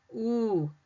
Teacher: When I say that ooh again in boot, the lips are rounded.